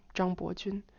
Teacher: But that's a 121 name because it's Zhang Bo 3 to 5, pitch level 3 to 5. That's tone 2, and Jun, that's first tone.